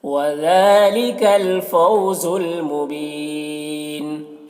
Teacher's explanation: وذالک، ذال میں کھڑا زبر ہے، ایک الف کے برابر کھینچیں گے۔ فو میں واولین سے نرم آواز کے ساتھ جلد پڑھیں گے۔